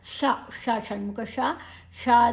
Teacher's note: ನಾಲಿಗೆಯನ್ನ ಮಡಚಿ ಹೇಳ್ತೇವೆ ಮೂರ್ಧನ್ಯ ಶ ಅಂತ ಕೂಡ ಹೇಳ್ತೇವೆ